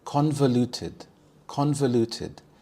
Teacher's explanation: The stress is on the first syllable. Con. Convoluted.